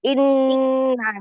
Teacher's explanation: Pendek tapi ditekan inna itu nun tasdidnya.